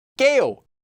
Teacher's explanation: due to sound change rules, this 게요 form is actually pronounced as 께요